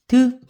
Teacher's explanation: 혀 끝이 올라가면서 여기 윗니의 뒤에 윗잇몸을 툭툭 칩니다.